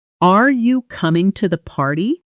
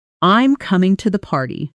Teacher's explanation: your voice rises at the end of yes or no questions and falls at the end of statements and most information questions. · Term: intonation